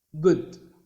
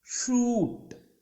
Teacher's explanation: Fourth one ఊ, షూట్. మన తెలుగు శబ్దాలలాగే ఊ ఊ, ఒకటి షార్ట్ వోవెల్, ఇంకొకటి లాంగ్ వోవెల్.